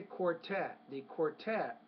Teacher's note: the stress on that second syllable not the first